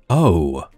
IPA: əʊ